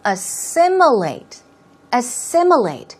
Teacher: Stress goes right there on the second syllable, so it's assimilate.